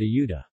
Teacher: the Spanish word ayuda, help, features a palatal approximant that is pronounced as a fricative in emphatic speech.